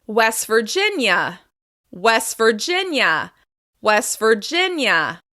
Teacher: we're going to stress the second word, and in this case, it's the second syllable of this word.